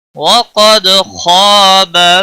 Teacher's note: خا حروف مستعلیہ میں سے ہے، موٹا پڑھیں گے